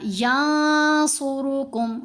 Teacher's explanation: یہاں دیکھیں ینصرکم ہم نے نہیں پڑھا، ینصرکم، صاد کو بھی موٹا پڑھنا ہے، را کو بھی موٹا پڑھنا ہے